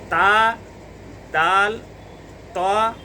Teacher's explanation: तो इसकी जो जड़ है वो ज़ुबान की नोक उसके जड़ में लगेगी तो ता, दाल, ता अदा होंगे। ये तीनों हरूफ अदा होंगे ज़ुबान की नोक और सनाया उलिया की जड़